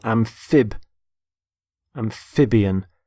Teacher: the stress on the middle syllable